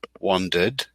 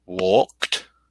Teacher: Every other word that ends in ed is either pronounced with a D sound, like this, wandered, a T sound, like walked